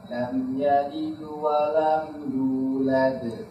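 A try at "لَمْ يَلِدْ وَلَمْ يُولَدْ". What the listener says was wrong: تمام.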